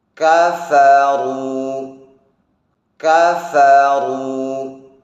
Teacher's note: rasakan pula tafkhimnya huruf ra dhammah.